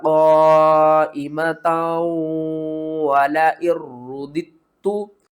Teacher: اس مد کو ہم نے 5 الف کے برابر کھینچ کر پڑھنا ہے، اور تا کو واو کے ساتھ ملائیں گے، ادغام مال غنہ کریں گے